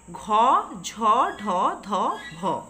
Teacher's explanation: এটা একদিকে যেমন ঘোষ ধ্বনি আবার অন্যদিকে মহাপ্রাণ ধ্বনি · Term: ঘোষ ধ্বনি আবার মহাপ্রাণ ধ্বনি